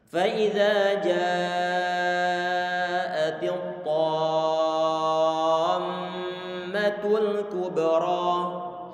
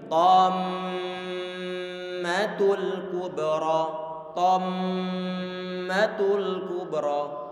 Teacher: Tadi ini adalah bacaan mad lazim kilmi musaqqal. Kita panjangkan terlebih dahulu bacaan madnya, setelah panjang 6 harokat baru nanti antum tempelkan langsung mengucapkan huruf mim.